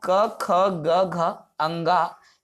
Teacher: सबसे पहले मैं बात करूं स्पर्श व्यंजन की, तो ये जो स्पर्श व्यंजन है, जिसको कंठ, तालु, मूर्धा, दंत और ओष्ठ में बांटा गया है, आपको स्क्रीन पर दिख रहा होगा, जिसमें क वर्ग आता है आपके कंठ से जो उत्पन्न होता है